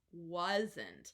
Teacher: our W sound has two parts. First is an ooh, and second is a whoa. So it has kind of two tiny little parts.